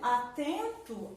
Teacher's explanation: Por exemplo, atento, a sílaba mais forte da palavra atento é tem. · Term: sílaba tônica